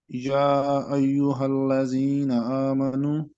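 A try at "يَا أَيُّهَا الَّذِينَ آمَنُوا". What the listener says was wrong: آمنو کو تھوڑا لمبا کریں. آمنو یہ حروف مدہ میں سے ہے واو. آپ کو یاد ہے حروف مدہ کیا ہوتے ہیں؟ ہاں تو یہ حروف مدہ میں سے تھوڑا سا اس کو لمبا کریں، 2 حرکات کے برابر. آمنو.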